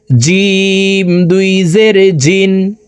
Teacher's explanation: জিম হরফকে জিহ্বার মধ্যখান থেকে উচ্চারণ করে পড়বো